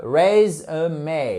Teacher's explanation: accentuation sur la première syllabe